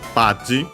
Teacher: The accent should be the same as in English. Oh yeah, accent on the ba.